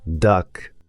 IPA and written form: dʌk (duck)